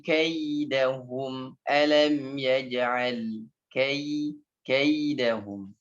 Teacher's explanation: Walaupun ya itu dia mati baris atas ya, tetap dia i-nya dominan, kai ai ya.